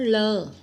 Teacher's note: ਪੰਜਾਬੀ ਦੀ ਲੱਲੇ ਪੈਰ ਧੁਨੀ ਜਿਸ ਨੂੰ ਬੋਲਣ ਵੇਲੇ ਜੀਭ ਤਾਲੂ ਨੂੰ ਛੂੰਹਦੀ ਹੈ